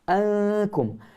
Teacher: Nun mati bertemu dengan kaf jangan tebal ketika dengunya.